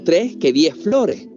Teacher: De Andalucía también proviene el debilitamiento de la S al final de las sílabas.